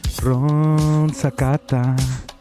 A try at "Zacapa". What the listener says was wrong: You keep saying Zacata. It's a P.